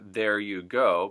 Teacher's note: the o gets pushed even further from oh - ooh so it's almost becomes an O sound so there you go